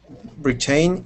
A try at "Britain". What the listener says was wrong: we put the emphasis the accent on the beginning of the word it's Britain